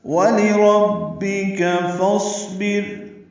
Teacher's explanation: واو ہونٹوں کی نا تمام گلائی سے ادا کریں گے